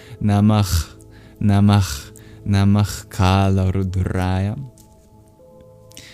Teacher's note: the visarga as it comes before the voiceless guttural sound Kā is that it also takes on that guttural aspiration